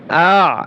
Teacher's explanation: হামজা আইন জবর আ গলার ভিতরে চাপিয়ে